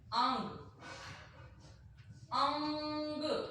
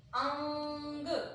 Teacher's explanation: हमारी आवाज नाक में ही रह गई, बाहर नहीं आई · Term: अनुस्वार